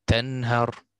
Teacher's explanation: I said the noon completely